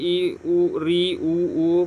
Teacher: संवृत स्वर जिनके उच्चारण कारण में मुंह कम से कम खुलता है।